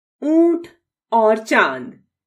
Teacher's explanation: के साथ प्रयुक्त होता है उसके अंत में ध्वनि देता है इसके उच्चारण में गले से निकलने वाली वायु नाक और मुख दोनों से बाहर निकलती है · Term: अनुनासिक सेमी नेजल